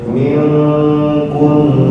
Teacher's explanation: Ming kurang lama dengungnya